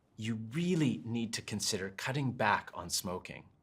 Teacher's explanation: When I say it like this, you really need to consider cutting back on smoking. You notice that it's a bit softer, and the intonation falls at the end, helping show empathy.